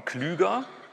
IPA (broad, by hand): kly:.gɐ